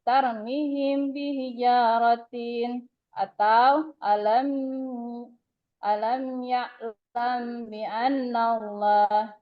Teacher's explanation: Cara membaca Iqfa Syafawi yaitu dengan suara yang samar antara mim dan ba pada bibir. Kemudian ditahan kira-kira 2 harokat atau 1 ketukan seraya mengeluarkan suara Iqfa dari pangkal hidung.